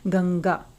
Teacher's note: आप पाएंगे जो बिंदु है, जो अनुस्वार है, उसकी आवाज हम नाक से निकाल रहे हैं